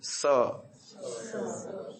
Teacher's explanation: उसका स्थान है दांत का मूल जहां मसूड़ा और दांत दोनों टच होते हैं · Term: दंत स